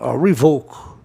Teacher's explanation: Revoke, a palavra é verbo, tem que ser oxítono